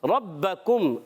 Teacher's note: बा मुशद्द जरा रुक कर अदा करेंगे हरकत रा पर भी बा पर भी और हरकात को बगैर खींचे अदा करेंगे। · کھینچنا ہے ربکم را پر زبر را کو پر پڑھیں گے با مشدد ذرا رک کر ادا کریں گے